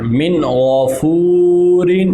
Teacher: واو مدہ ہے تو ایک الف کی مقدار کے برابر ہم اس کو لمبا کریں گے